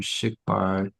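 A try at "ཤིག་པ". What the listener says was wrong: High tone, obviously high tone. Shikpa.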